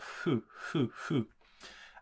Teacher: So it's a bit like hu, hu, hu, hu. It's almost like a breath, a sort of puff of air, and you have that friction between the lips to pronounce it as fu, fu, fu.